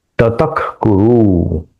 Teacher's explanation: यह जो विसर्ग है उसका उच्चारण स्लाइट ख से होगा क्योंकि यहां क है हमने वो स्लाइड देखी थी प फ और क ख का हम तो वहां से हम जानेंगे कि विसर्ग के बाद क आता है या ख आता है तो यह विसर्ग का उच्चारण ख के जैसे होगा।